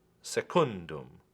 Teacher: Also accented on the penultima because it is long by position.